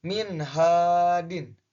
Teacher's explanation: Di sini contohnya min hadin. Nah, min hadin bacanya jelas, baca nun matinya jelas karena nun mati bertemu dengan H dan H itu termasuk hukum bacaan idhar, maka dibacanya jelas.